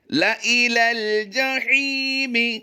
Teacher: یہاں پر ہم نے لام الف کو لمبا نہیں کرنا بلکہ لام زبر لا · لا الى الجحیم، یہاں پر لام یا الف، یہ جو آپ دیکھ رہے ہیں یہ یا اور الف جو ہے یہ نہیں پڑھا جائے گا بلکہ لام کو لام کے ساتھ ملا کر آواز دیں گے